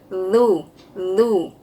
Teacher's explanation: Zu menggunakan ujung lidah yang keluar menyentuh gigi.